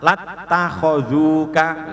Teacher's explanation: Watta, watta, wattaba'a, waddakara, fattaqu, summattakhadtum, wattaba'u, faddara'tum, lattakhadzuka. Nah ini lamnya alifnya hilang, hamzah wasolnya hilang menjadi lattakhadzuka